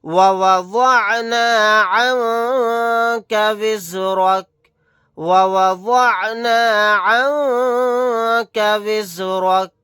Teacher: وَوَضَعْنَا عَنْكَ وِزْرَكَ وَوَضَعْنَا عَنْكَ وِزْرَكَ، یہاں پر وعد کو موٹا یعنی پر پڑھنا ہے۔ نون ساکن کے بعد کاف آ گیا، یہاں پر اخفا کا قاعدہ ہوگا، نون کی آواز کو ناک میں چھپا کر پڑھیں گے۔